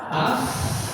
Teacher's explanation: Gigi atas, SOP-nya adalah gigi atas sama bibir bawah.